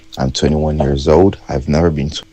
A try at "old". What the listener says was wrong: old, so dark L, old versus old, old. Otherwise, the distinction between old versus ode disappears. So it sounded almost like you said 21 years old, ode, kind of. But yeah, if you're trying to sound like me, there's a distinction here.